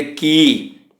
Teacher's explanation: ਕੀ ਦੇ ਅੱਗੇ ਐੜਾ ਮੁਕਤਾ ਹੈ, ਇਸ ਲਈ ਇਸ ਦੀ ਆਵਾਜ਼ ਥੋੜ੍ਹੀ ਲੰਬੀ ਜੇ ਕੀ